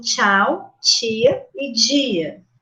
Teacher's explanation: produzida com uma oclusão total e momentânea do fluxo de ar seguida de um estreitamento do canal bucal também gera um ruído de fricção depois que você relaxa essa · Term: africadas